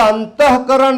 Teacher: અંતઃકરણમાં આપોઆપ ત લંબાય છે, વિસર્ગ લંબાય છે